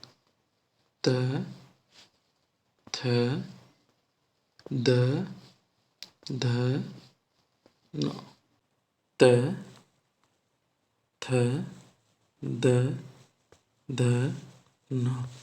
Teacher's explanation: त वर्ग हमारे दंत में आते हैं।